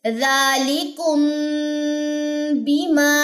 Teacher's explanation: میم ساکن کے بعد اگر با متحرک آ جائے تو وہاں پہ بھی ہم غنہ کریں گے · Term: اخفاء شفوی